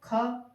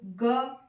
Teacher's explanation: जैसे हम ख बोलते हैं और पीछे से एक अ जो स्वर है उसका जो है विस्तार होता हुआ दिखाई सुनाई देता है